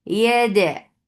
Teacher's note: Dal gets sifa qalqala. This qalqala should be very clear.